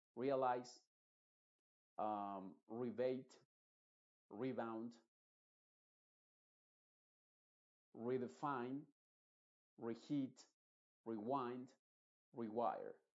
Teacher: Pero pienso que deberías al principio pensar en que todas estas se van a pronunciar como re, con una I bien clara que es la E original